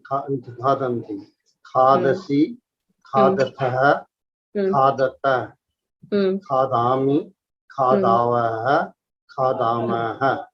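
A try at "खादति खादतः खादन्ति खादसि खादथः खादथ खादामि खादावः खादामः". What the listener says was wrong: Samyak.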